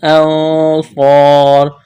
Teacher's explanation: نون ساکن کے بعد صاد ہے، اخفا کرنا ہے، آواز ناک میں چھپانی ہے ، صاد کو موٹا کرنا ہے، سیٹی کی آواز پیدا کرنی